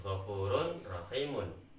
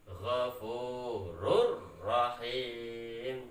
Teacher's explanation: Jika ada tanwin bertemu dengan ro, maka harus diidghamkan tanpa dengung. Cara bacanya Ghafurur Rahim, seperti itu.